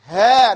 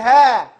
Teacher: It's from the throat, the deepest part.